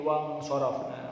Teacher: Wang sorof ada nun mati bertemu huruf shad, harus dibaca ikhfa atau samar.